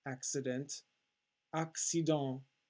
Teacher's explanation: we do not pronounce the nt it makes a nasal sound